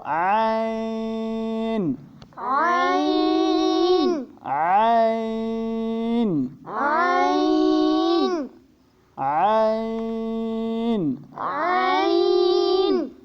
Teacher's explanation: ये भी हुरूफ हल्की है और गर्दन के दरमियान से इसको पढ़ते हैं